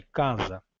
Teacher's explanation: Então nós sabemos que essa palavra é grafado com C-A-S-A e nesse caso aí o S único intervocálico passa a ter o som de Z.